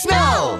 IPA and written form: snəʊ (snow)